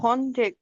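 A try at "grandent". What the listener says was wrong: ঘন্টে না, ঘন্ট, ডিআর একসাথে সাউন্ড হয়, লাস্টের ওটা তো কোনো সাউন্ড নাই, হ্যাঁ।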